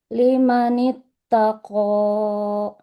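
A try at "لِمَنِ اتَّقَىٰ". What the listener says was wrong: Qafnya kepanjangan ya Bu. Cukup dua harokat saja. Limanit tako.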